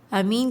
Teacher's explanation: امین کے اندر بھی یا مدہ ہو رہا ہے، یہاں پر بھی ہمیں 2 کاؤنٹس کھینچنا ہے